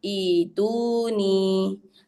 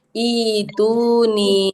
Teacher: huruf ta mati dan hamzah mati diganti huruf ya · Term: badal